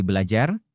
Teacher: bunyi R pertama didisimilasikan dengan bunyi L, sehingga menjadi belajar.